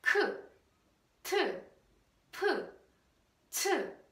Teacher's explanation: as the air comes out, the sound is produced with the sudden puff, with very strong puff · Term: aspirated sound